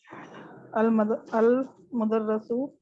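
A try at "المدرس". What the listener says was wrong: मुदर्रा नहीं है बेटा, आप बार बार गलत पढ़ रही, मैं बार बार सुन रही हूँ चुप करके, कब सही पढ़ेंगे. अल मुदर्रिसु, तशदीद देखें, तशदीद के नीचे होगा तो जेर होगी.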